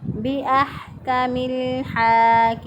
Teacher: ہم زبر ہا کو وسط حلق سے ادا کریں گے بِأَحْكَمِ الْحَاكِمِينَ، لام ساکن، ساکن کو پیچھے والے متحرک حرف کے ساتھ ملایا، میم کے ساتھ اس کو ملایا تو یہ الف درمیان میں جو الف ہے یہ پڑھنے میں نہیں آئے گا۔